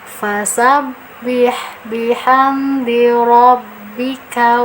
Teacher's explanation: fasabih kita tekan karena ada tasydid